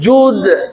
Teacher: Ju monyong, dalnya lebar.